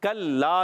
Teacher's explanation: कल्ला काफ का मखरज है ज़बान की जड़ और तालुका सख्त हिस्सा याद रखना है आपको कल्ला में काफ को बारीक रखना है कल्ला लाम मुशद्दद एक जरा रुक कर अदा करेंगे